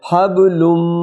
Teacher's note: نون ساکن کے بعد میم آ گئی تو نون نہیں پڑھی جائے گی، میم پڑھی جائے گی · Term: میم غنہ